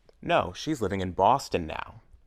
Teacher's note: in the second sentence the main stress is on Boston where she's living Boston is more important than when now time